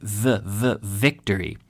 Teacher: So you start with an F. The secret here, the V is a voiced F